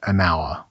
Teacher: the H is silent, so the word begins with a vowel sound